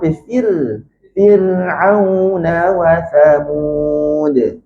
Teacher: bila sebut fir tu pastikan kasrah baris fa kita tu kasrah dia tajam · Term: kasrah tajam